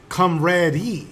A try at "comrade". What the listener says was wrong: You're saying it wrong. The E is silent.